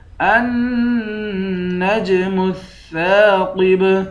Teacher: نون کے بعد جیم ہے، جیم حروف قلقلہ ہے، یہاں پر قلقلہ کریں گے۔ النجم الثاقب سا کے بعد الف ہے، الف حروف مدہ ہے، اس الف کو 1 الف کی مقدار کھینچ کر پڑھیں گے، قاف کو موٹا پڑھیں گے، آخر میں حروف قلقلہ ہیں، یہاں پر قلقلہ کریں گے۔